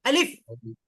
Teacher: হলক বা কণ্ঠনালীর শুরু হতে এই শব্দটি উচ্চারিত হয়